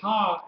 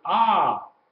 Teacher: you pronounce the patah first, then the H sound. So instead of pronouncing it ha, H-A, you pronounce it ah, A-H. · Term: furtive patah